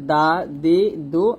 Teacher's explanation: আর দদটা কিন্তু জিহ্বার আগা আমাদের সামনের যে দাঁতগুলো আছে ওই দাঁতের সাথে লাগানো যাবে না, দদ মোটা করতে হবে